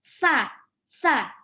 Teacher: salah situ cirinya gitu ada udara yang berhembus sah-sah waktu kita ucapin sak pasti ada udara yang berhembus cara untuk ngeceknya adalah nih telapak tangan didekatkan ke bibir va2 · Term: Hames